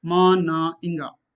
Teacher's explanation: all three are voiced. There is no voiceless counterpart. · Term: nasals